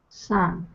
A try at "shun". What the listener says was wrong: Let's take a look at my lips really quickly. Look at this. Look at the way they're the shape. Shh. You're putting your tongue behind your teeth, hair. But that's not where I'm putting my tongue.